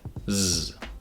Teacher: buzzing sound made toward the front of the mouth, Z. And the last sound is like the first vowel sound, but is tense instead of lax, E.